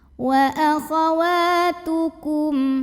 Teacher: Cara membacanya dipanjangkan wawunya 2 harokat. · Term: mad tabi'i